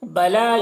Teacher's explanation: یہاں پر مد منفصل ہے، 3-4 الف کے برابر کھینچیں گے، اور ایک الف کے برابر بھی کھینچ کر پڑھ سکتے ہیں.